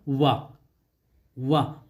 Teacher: यह भी बहुत बार पूछा जाता है कि दंत प्लस ओष्ठ, तो वह है आपका वर्ण वा। वाह, दंत ओष्ठ का मतलब कि इसको बोलते समय दंत और ओष्ठ दोनों का प्रयोग होता है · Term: दंतोष्ठ